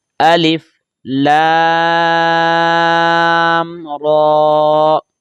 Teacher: را کو پر پڑھیں گے اور اس کو 1 الف کے برابر کھینچ کر پڑھیں گے